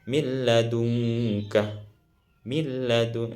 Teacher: cara bacanya bunyi nunnya dimasukkan pada huruf setelahnya tanpa didengungkan. Contohnya min ladunka, min ladun, itu masukkan nun pada lam tanpa dibaca dengung. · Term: idgham bila gunnah